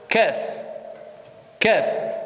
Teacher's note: Le fond de la langue, t'avances un tout petit peu.